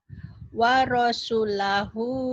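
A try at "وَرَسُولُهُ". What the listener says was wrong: Sunya panjang. Warasulahu. Wa rasulahu wa rasul. Jadi atau di mad-madnya. Jadi jangan kamu jangan juga gini. Wa rasul jangan.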